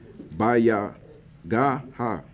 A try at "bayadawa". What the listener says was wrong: That's a D there. Bayadawa.